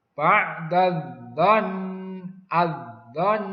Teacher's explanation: alif lamnya tidak terbaca. Langsung masuk ke huruf syamsiahnya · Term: alif lam syamsiah